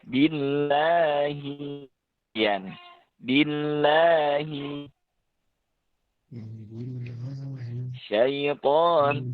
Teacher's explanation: Ada yang masih berlebihan. Yang pas itu kalau ukurannya itu dalam ilmu tajwidnya itu 1 alif. 1 alif atau 2 harokat. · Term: bacaan panjang